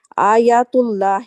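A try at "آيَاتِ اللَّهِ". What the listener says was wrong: جی یا کو تھوڑا اور لمبا کریں، آیات اللہ۔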